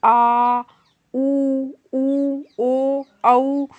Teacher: वे स्वर जिनको उच्चारित करने में मुख के अंदर से अर्थात जिब के सबसे आखिरी भाग से आवाज निकल के आए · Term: पश्च स्वर